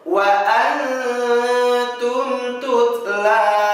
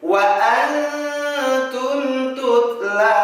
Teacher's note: nun sukunnya, kemudian kita tahan selama 2 harokat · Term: ikhfa